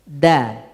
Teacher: Dal itu di ujung lidah dengan pangkal gigi seri atas. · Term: huruf dal